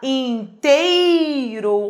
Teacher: Olha como o E é mais forte que o I. Ditongo decrescente